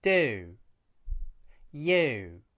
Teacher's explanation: The squeezing of the lips at the end of this vowel is crucial for the right sound. It also allows us to connect this vowel to other vowels.